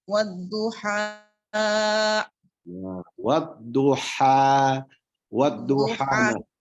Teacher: sudah mengucapkan H-nya dengan benar, yaitu mengeluarkan H daripada huruf H itu dari tengah tenggorokan gitu.